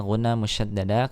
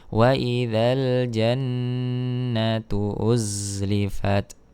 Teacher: Wa idzal jannatu, wa idzal alif lam qamariyah, wa idzal jannah ditahan dulu di sini ghunna musyaddada karena nun yang bertasydid